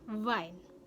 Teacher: dihasilkan dari bibir bawah yang menyentuh gigi bagian atas seperti pada F pada kata family V pada kata Vine berikutnya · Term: labiodental